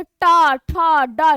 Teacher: अब क्या है, आप बोलेंगे टा ठा डा, जिह्वा जा रही है और क्या हो रहा है, तालु के पिछले भाग को स्पर्श कर रही है, यानी कि ये क्या है, ये मूर्धन्य है